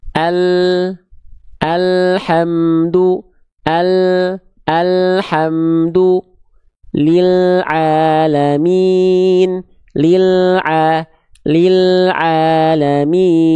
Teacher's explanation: dengan penyimpangan makhraj itu yang bagaimana Bang penyimpangan makhraj itu jadi ketika melafazkan huruf lam dia agak disimpangkan ke kanan atau ke kiri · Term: inhiraf